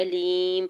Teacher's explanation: یا ساکن سے پہلے لام کے نیچے زیر، یا مدہ ہو رہا ہے، 2 حرکت کھینچ کے ادا کریں گے اور میم کے اوپر 2 پیش کی تنوین ہے، وقف کی صورت میں میم کو ساکن کر دیں گے۔